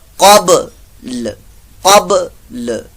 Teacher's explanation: با ساکن کرتے ہوئے لام سے آگے پڑھنا ہے، لام کو صرف ٹچ کرنا ہے